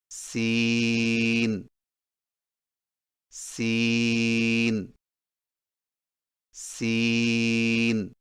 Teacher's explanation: سین کی ادائیگی میں زبان کی نوک کو سامنے والے نیچے کے دو دانتوں کے کناروں سے مضبوطی سے لگا کر باریک اور سیٹی جیسی آواز میں پڑھیں